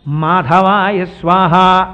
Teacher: పెదవులు రెండు కలుసుకుంటే వచ్చేటటువంటి అక్షరం పలకాలి